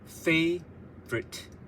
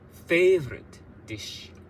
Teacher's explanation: So the last two syllables are read quickly